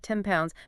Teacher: that can end up sounding like 10 pounds because that N sound kind of shifts a bit to get ready for that P sound that's coming next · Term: assimilation